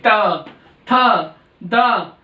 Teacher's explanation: दंत्य वर्ग में तय वर्ग के शब्द आते हैं, अक्षर आते हैं जो दांत में लग जाए, हमारी जीभ दांत से लगेगी तो बोले जाएंगे।